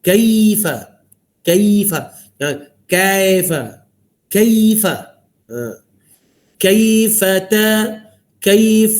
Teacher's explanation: Kaf ada sifat hamas dan juga syiddah, tahan suara lepas nafas.